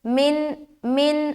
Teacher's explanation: لیکن جس الف کے اوپر حرکت آ جائے یا کوئی بھی سمبل آ جائے، کوئی نشان آ جائے، پھر اسے الف نہیں بلکہ حمزہ بولنا ہے۔ تو یہاں پر نون ساکن کے بعد حمزہ آ گیا، لہٰذا یہاں اظہار کریں گے، نون کی آواز کو ظاہر کرنا ہے